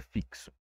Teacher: uma letra pode representar mais de um fonema, como em fixo, em que a letra X representa dois fonemas, que é o K e o S